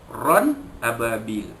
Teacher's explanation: Ran ababil, ra 2 di atas ran bertemu dengan hamzah pada ababil, ya, izhar halqi, ya, tanwin bertemu dengan hamzah, ya, jadi tanwin itu dinyatakan bunyi tanpa dengung